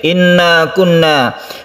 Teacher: kunna musyaddadah kita dengungkan pada tasydid nun